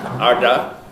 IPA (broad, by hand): ɑɖɑ